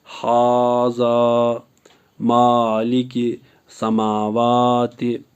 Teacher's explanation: खड़ा ज़बर बराबर होता है अलिफ मदा के, इसलिए खड़ा ज़बर को एक अलिफ के बराबर खींच के पढ़ेंगे